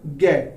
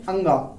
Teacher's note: जैसे ही आप इसे बोलेंगे अंगा, कम हवा बाहर आएगी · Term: अल्प प्राण